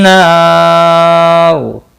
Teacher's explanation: ना अलिफ मद्दा है, एक अलिफ के बराबर खींच कर पढ़ेंगे। और वक़फ़ की सूरत में रो साकिन पढ़ा जाएगा, पुर भी पढ़ा जाएगा।